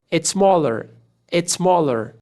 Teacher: Aqui a gente corta esse S, porque a próxima já começou com S. Então a gente junta tudo.